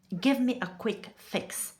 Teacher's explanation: Every vowel ends immediately.